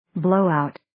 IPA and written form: 'bloʊ,aʊt (Blowout)